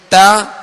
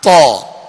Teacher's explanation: تا کو باریک پڑھیں گے اور تو کو پر یعنی موٹا پڑھیں گے